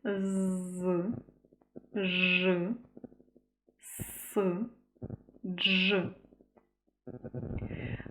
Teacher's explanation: Це єдині приголосні в українській мові які ми можемо протяжно вимовити